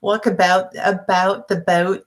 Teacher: in the South, all the vowels are really rounded out